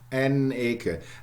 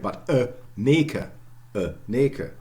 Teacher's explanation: you take the n as belonging to the stem of Eke, not to the indefinite article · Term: agglutination